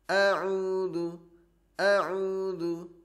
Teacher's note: huruf hamzah tidak boleh panjang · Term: 1 harokat